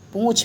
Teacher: अनुनासिक इसका उच्चारण नाक से होता है, नासिका से।